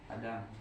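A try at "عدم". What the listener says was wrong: Adam itu pakai ain. Adamu. Adamun. Adamu panjang itu. Kalau pakai ain pendek, adamun artinya tidak ada.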